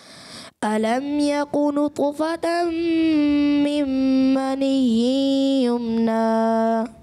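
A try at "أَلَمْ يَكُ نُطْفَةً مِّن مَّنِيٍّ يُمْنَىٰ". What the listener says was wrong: और यकु काफ की अदायगी थोड़ी बारीक करेंगे। अलम यकुन नुतफ़तन मिन मनिय्यिन युमना।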